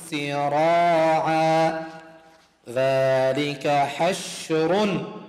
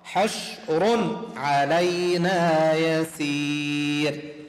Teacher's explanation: ليش أظهرت التنوين؟ لأن بعده حرف العين إظهار